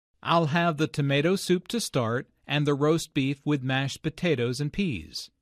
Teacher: notice that tomato soup roast beef mashed potatoes and peas are stressed because the food order is the important information here notice also